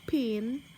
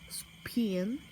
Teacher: You can tell this by putting your hands to your mouth as you say them. You shall be able to feel a breath of air going out as you say pin, but not as you say spin. The P sounds in pin is said to be aspirated, and that in spin is aspirated.